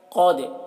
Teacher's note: قاف کو پور پڑھیں گے، قاف حروف مستعلیہ میں سے ہے۔ دال میں قلقلہ کریں گے کیونکہ دال حروف قلقلہ میں سے ہے اور اس کے اوپر جزم ہے، تو قد ایسے پڑھیں گے۔